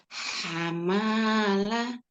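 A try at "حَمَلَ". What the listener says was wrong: Nggak ada yang panjang.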